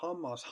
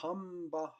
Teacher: hammas on teine välde, hamba on kolmas välde